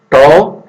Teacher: অঘুষ, অল্প প্রাণ, মূর্ধন্য